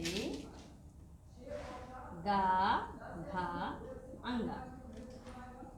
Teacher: जिन वर्णों के उच्चारण में हमारे मुख के स्वर तंत्रियों में कंपन होता है, वे सघोष वर्ण कहलाते हैं।